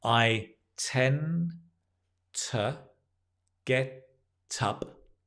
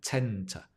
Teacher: The tend, the d, kind of drops because you've got t later.